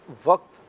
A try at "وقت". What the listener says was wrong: وقت، قاف کو ساکن پڑھنا ہے، قاف پہ جزم ہے، اس پر زبر نہیں پڑھنا۔ اور کئی ایسے اسلامی بھائی ہیں، کئی ایسے افراد ہیں کہ جو یہ بڑی کثرت سے چونکہ لفظ استعمال ہوتا ہے تو وقت نہیں بلکہ وقت ہے، آپ کو دکھایا بھی